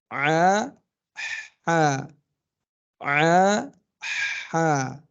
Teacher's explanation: Tapi di tengah. Kalau ain tadi nutup, buka sedikit, keluar ha.